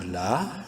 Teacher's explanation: لام الف زبر لا، مدہ ہے الف، لام کو ایک الف کے برابر لمبا کریں گے